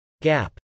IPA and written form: gˈæp (gap)